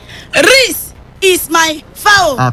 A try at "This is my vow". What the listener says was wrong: It's not Riz. It's not R-I-S. You remove the R and put only I-S. This is my vow.